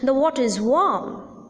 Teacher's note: the sentence or the sense is incomplete and hence a rising tone is used